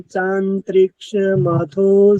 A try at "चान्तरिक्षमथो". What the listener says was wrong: पृथिवीं चांतरिक्ष, चांतरिक्ष पूरा बोलना है त को, क्योंकि तय में हलंत नहीं है। न नया आधा है।